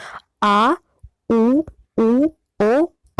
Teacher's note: जिन स्वरों के उच्चारण में जीवा पीछे यानी पश्च भाग की ओर सक्रिय होती है उसे पश्च स्वर कहते हैं